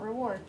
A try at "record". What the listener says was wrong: It's not reward, there's no W. Record.